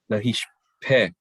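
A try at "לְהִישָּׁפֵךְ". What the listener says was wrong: But you're missing the ah. And do we need a dagesh in that?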